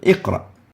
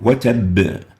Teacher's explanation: And the reason for that is that as the tongue is getting ready to pronounce the following letter, it puts less stress on the currently pronounced letter. So as you're moving from the qaf to the ra, you don't have much time to perform the vibration like when you pause and stop. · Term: lowest level of Qalqalah